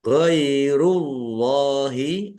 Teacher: Allahnya dibaca tebal karena harakat di depannya dommah